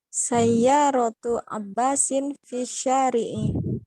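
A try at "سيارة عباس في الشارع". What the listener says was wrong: Sahih.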